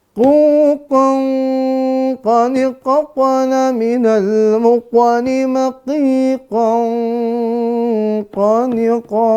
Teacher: Pastikan yang keluar dari pangkal lidah bagian bawah. Jangan sampai ke atas, apalagi tidak di pangkal lidah.